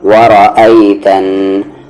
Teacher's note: غنہ کریں گے، یعنی آواز کو ناک میں رکھیں گے